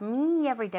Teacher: we have the two e's together so we're going to naturally link the sounds